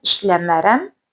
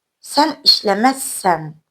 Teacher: inkarında da qeyd elədiyimiz kimi qeyri-qəti gələcək zamanda ari şəkilçisi R samitinin Z samitinə keçməsini müşahidə edirik.